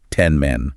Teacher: The N sound which you make with your tongue changes to an M sound which you make with your lips because your lips are already getting ready to say the M in men.